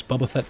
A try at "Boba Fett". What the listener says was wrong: This man is still pronouncing Boba Fett as Bubba Fett.